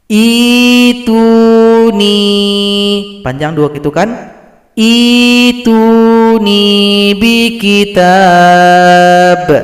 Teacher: huruf hamzah yang sukun kita ganti dengan huruf ya. Ituni, panjang 2 ketukan. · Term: ibdal